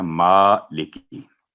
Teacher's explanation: ली की आवाज़ लंबी नहीं होगी 1 सेकंड, और की, मालिकी, मालिकी नहीं होगा ये, तो ये हो गया मालिकी।